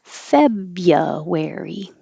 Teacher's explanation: Forget about that first R after the B. We don't say it at all.